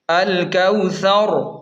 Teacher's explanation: وقف کا طریقہ یہ ہے، جب ہم یہاں پہلی آیت پر رکیں گے تو آخری حرف را ساکن ہو جائے گا، لیکن اسے موٹا ہی پڑھا جائے گا